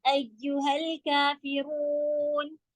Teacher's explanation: कुल कलकला नहीं देना है, लाम कलकला का लेटर नहीं है